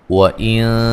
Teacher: نون ساکن کا باریک اخفا ہے۔